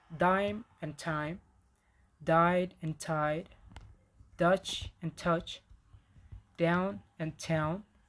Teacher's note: Here are minimal pairs with and without aspiration.